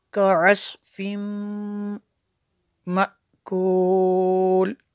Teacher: तनवीन के बाद मीम रूफ़ यरमलून में से है तो यहाँ पे इदगाम होगा